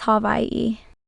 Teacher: Basically, the and the H merge, the W and the I merge, the W makes a V sound since it is surrounded by vowels, and then we have an okina and an I.